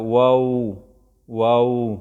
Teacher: مخرج نمبر 16 چې د هغې نه واو با میم 3 حروف ادا کیږي او دا د شونډو نه ادا کیږي، خو لیکن موږ ویلو چې د شونډو 2 حصې دي، یو بارنۍ حصه ده هغه وچه یو دننۍ حصه چې هغه لمدی. نو واو کې به شونډې راګول کیږي